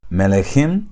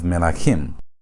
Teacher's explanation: the second syllable, its vowel has been lengthened from segol to kamatz.